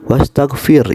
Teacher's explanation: itu adalah tarkik karena ro mati sebelumnya berharokat kasroh